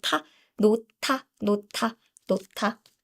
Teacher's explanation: this is aspirational sound. So you use a lot of air. And then if you pronounce this sound, it's like ta, nota, nota, nota.